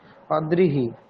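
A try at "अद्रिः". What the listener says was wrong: অদ্রিহি, ঠিক একদম।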